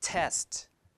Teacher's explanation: number three test the word test one syllable so always dress so the first T is aspirated